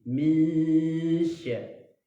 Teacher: Nah, jadi caranya adalah kita harus baca dengan ikhfa, yaitu kita ada nun sukunnya samar masuk ke dalam huruf shin